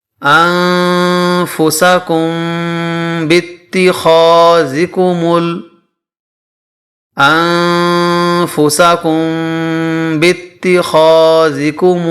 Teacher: کم کے اندر اخفائے شفوی ہوگا کیونکہ میم ساکن کے بعد با آ رہا ہے